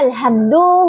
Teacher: Kata alhamdu huruf ha yang makhrajnya itu di tenggorokan tengah. Huruf mim makhrajnya itu di bibir yang tertutup rapat.